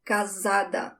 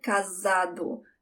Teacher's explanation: That S, one S between two vowels, sounds like a Z